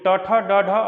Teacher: ड का उच्चारण स्थान जो है मूर्धन्य है, क्योंकि ट, ठ, ड, ढ, अड़ ये सब मूर्धन्य वाले हैं